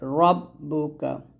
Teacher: রাব্বুকা বলবেন না র টা মোট করে রব্বুকা